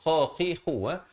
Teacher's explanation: kha di hujung kerongkong